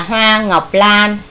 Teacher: Từ này cô lưu ý các con vần oa và vần an. Vần oa khi các con đọc thì tròn môi lại